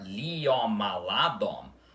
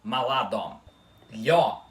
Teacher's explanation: O I da letra Lhe tem que ser pronunciado muito rapidamente e formando uma sílaba só com a outra vogal, tá? Então, em vez de ficar liomaladom, com o I mais demorado, é maladom.